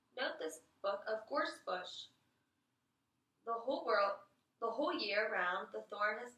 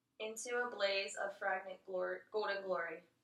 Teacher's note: Towards the end, there was a little bit of glottal fry.